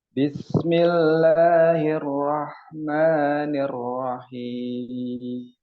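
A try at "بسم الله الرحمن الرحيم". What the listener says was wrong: Ini tinggal ininya ya, Pak. Roknya ya. Nah, roknya itu yang bermain masih mulutnya ya. Belum pangkal lidahnya. Nah, jadi mungkin perlu dilatih ya. Bismillahirrahmanirrahim. Arro ya. Arro, hirro, nirro, nirro ya. Bukan nirro. Arro, arro. Karena ini bukan kesalahan yang besar.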